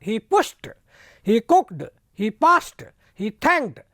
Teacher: तो डे के स्थान पर टे हो गया। तो मैंने आपको नियम बताया, इन शब्दों का अगर अंत आए, इन शब्द जो अंत में आए क्रिया के, तो उन पर डी या टी ई डी लगाओगे तो ये डे के स्थान पर टे हो जाएगा।